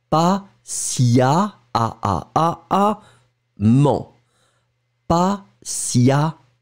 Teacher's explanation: Et ça c'est fondamental, d'accord? Donc le E va être prononcé comme un A